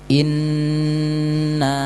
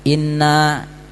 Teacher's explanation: Kan bacanya harusnya 2 harokat kalau ada gunah itu atau dengung